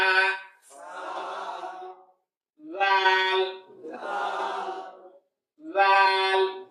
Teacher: জিহ্বার আগা উপরের দাঁতের আগা।